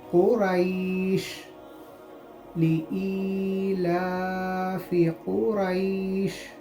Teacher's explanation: یا ساکن سے پہلے زبر آ گیا تو اس کو ہم یالین کہتے ہیں، اور یالین کا قاعدہ نرم آواز سے جلدی پڑھنا ہے